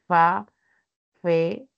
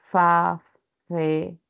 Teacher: nuestro labio inferior se aproxima a los bordes de los dientes, de los incisivos, ¿no? Entonces, por eso es que va a producir un sonido como si quisiera silbar y no puedo, ¿no? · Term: labio dental